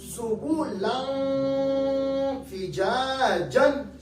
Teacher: اب دیکھیں سبلن فجاجن. اب میں نے سبلن کہتے وقت نون کو نون کے لیے زبان کی نوک کو اوپر نہیں لگایا، آواز ناک پہ لے کے گیا ہوں. اخفا کا معنی ہے آواز کو چھپانا.